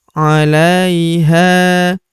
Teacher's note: Huruf ha kita panjangkan dua harakat karena terdapat tanda alif di depannya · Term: panjangkan 2 harokat